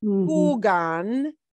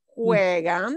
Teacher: that little U in the infinitive, the original verb of jugar, splits off into a double vowel thing, yeah? What they call a diphthong, but I don't care that you know that it's a diphthong.